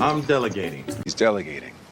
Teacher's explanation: when you use this verb in the continuous tense, it's going to change from a stop T to a flap T, at least with the American accent.